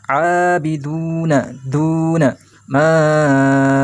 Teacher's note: Ma-nya dibaca panjang 4 ketukan atau 2 ayunan · ainnya harus dibaca panjang karena ada fathah diikuti alifnya atau fathah panjang